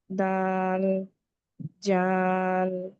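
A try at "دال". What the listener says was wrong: যা না আপু, একেবারে নরম করে উচ্চারণ হবে দালটা, জিহ্বার আগাটা উপরে 2 দাঁতের আগার সাথে শুধুমাত্র লাগিয়ে উচ্চারণ করবে।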